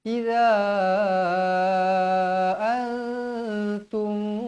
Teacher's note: Mad jaiz munfasil dibaca dengan kadar 4 atau 5 harakat.